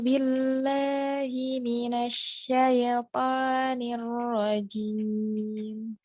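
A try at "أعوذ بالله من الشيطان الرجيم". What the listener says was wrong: Ya, ro-nya sedikit kasih getaran. Kasih getaran.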